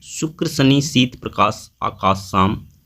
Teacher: उच्चारण में जीभ तालु से सटती है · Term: तालेब सा